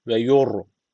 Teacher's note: ra harfi cezimle öncesindeki harf üstten bağlandığı için ra harfi burada kalın okunacak.